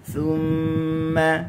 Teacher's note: ثم huruf tha, ujung lidah di ujung gigi atas